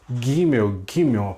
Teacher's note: Nós temos as palatais, Gimel, Gimel, falado lá no palato, né? No céu da boca.